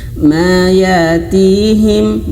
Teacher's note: Hamzah yang sukun ayah bunda harus betul-betul dihentak ya, dihentak atau terputus suara, karena di antara sifat huruf hamzah itu dia terputus suara dan angin ya ketika dia sukun